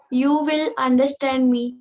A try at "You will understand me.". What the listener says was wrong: அது அழகா சொல்லணும் இல்லையா? ஒரு ஃபீலோட. அடே போடா நீ என்ன புரிஞ்சுக்கோடாங்கிற மாதிரி இருக்காது.